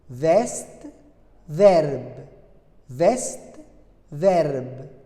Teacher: Puisque la syllabe se termine par une consonne prononcée, alors la syllabe est fermée. Il faut que la voyelle soit ouverte. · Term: E dans une syllabe fermée